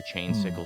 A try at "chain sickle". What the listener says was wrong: Okay, can you stop pronouncing it as one word and add a space? Say chain sickle. Don't say chain sickle, because once again, I want an ice cream treat that I don't have.